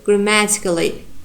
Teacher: ma gives our strong stress, and here other syllables are unstressed. We have here all secondary and zero degree of stress.